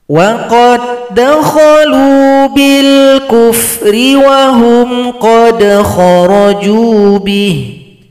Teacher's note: dal sukun berjumpa dengan dal. Ini adalah idgham mutamatsilain. Dal yang pertama telah gabung pada dal yang kedua, maka tidak dibaca lagi.